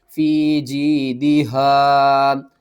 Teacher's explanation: یہاں پر بھی یا ساکن سے پہلے زیر ہے، اس کو بھی آپ نے ایک الف کے برابر کھینچنا ہے. ہا کو آپ نے حلق کے سب سے نیچے والے حصے سے کھینچ کر پڑھنا ہے بھاری آواز کے ساتھ